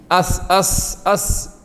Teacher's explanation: തട്ടാതെ രണ്ടു വരി പല്ലിന്റെ ഇടയിലൂടെ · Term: പ്യൂർ സീൻ